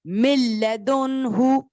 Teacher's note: نون کو اسکپ کیا, لام کو پک کیا وداؤٹ غنہ.